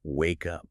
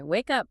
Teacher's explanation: The K in wake should link directly into the U in up without any extra vowels in between. It should sound like one single fluid word, wake up.